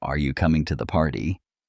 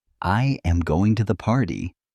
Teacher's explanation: the voice rises toward the end